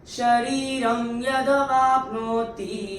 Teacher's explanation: अनुस्वार के बाद अगर य आता है तो अनुस्वार का उच्चारण होता है म। आधा म। अपनी किताबों में लिख दीजिएगा। · तो पहले चरण में यहाँ पे र के ऊपर जो अनुस्वार है उसके बाद का अक्षर है य, और अनुस्वार के बाद अगर य आता है तो अनुस्वार का उच्चारण होता है म, आधा म